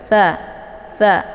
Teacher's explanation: Hurufnya yaitu ujung lidah tempelkan ke ujung gigi seri bagian atas. Tha. Jadi dia hurufnya lembut dan desis anginnya itu agak samar-samar karena sifatnya adalah hamas.